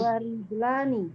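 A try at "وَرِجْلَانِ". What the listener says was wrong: Naam, ahsanti, sahih.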